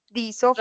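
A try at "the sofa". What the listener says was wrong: No, da, sofa. Porque empieza, sofa empieza en consonante. Da, sofa.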